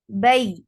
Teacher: You are lifting your tongue, middle of your tongue up towards your palate, but you are not actually touching it. If you will touch that, the sound will be yeah. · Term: ya